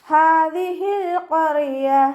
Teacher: ഹാദിഹിൽ ഖറിയ, ഹാൻ്റെ കൂടെ അലിഫ് സ്വൈറയാണ് വന്നിട്ടുള്ളത്, 2 കൗണ്ട് നീട്ടിക്കൊടുക്കുക. ഹാൻ്റെ മഖ്റജ് അഖ്സൽ ഹൽക്കാണ്, തൊണ്ടയുടെ അവസാന ഭാഗം